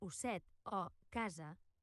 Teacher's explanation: quan la S està entre dues vocals, com a osset o casa, ha de sonar vibrant, com el brunzit d'una abella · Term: La S sonora